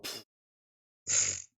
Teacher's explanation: the sound in this language that's closest to F is actually a bilabial sound. So it's pa, not fa. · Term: bilabial fricative